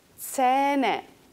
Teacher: Fíjense además que lleva una H, luego es una A palatalizada larga.